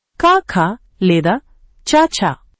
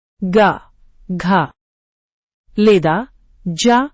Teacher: వర్గ విశేషాలు ప్రతి వర్గంలో ఐదు అక్షరాలు ఉంటాయి. మొదటి రెండు అక్షరాలు అఘోషం క ఖ లేదా చ ఛ మూడవ నాలుగవ అక్షరాలు ఘోషం